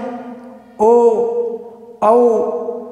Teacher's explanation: वे वर्ण जिनका उच्चारण करते समय ध्वनि कंठ से निकलती है और होंठों की आकृति है वो गोलाकार हो जाती है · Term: कंठोष्ठ